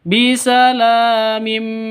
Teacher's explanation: Karena idgham bi gunnah. Tanwin bertemu dengan mim, masuk ke mim langsung